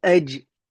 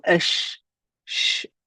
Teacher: jim touches the top palate, the sheen hovers over it. The sheen doesn't directly touch